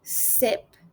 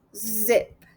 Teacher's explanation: You push air through a narrow space between your tongue and alveolar ridge without using your voice. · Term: voiceless alveolar frictive